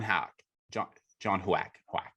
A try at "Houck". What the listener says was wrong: No, it's not Huck. It's Houck. Like it's pronounced like H-A-W. How?